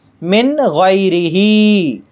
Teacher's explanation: نون ساکن کے بعد حروف حلقی میں سے غین آیا ہے، اس لیے نون ساکن کو ظاہر کر کے پڑھیں گے بغیر غنہ کے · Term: اظہار